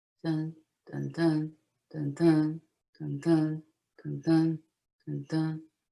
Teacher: That's the heartbeat of the verse in a Shakespeare play. The verse emulates the human heart. It has an unstressed and a stressed foot.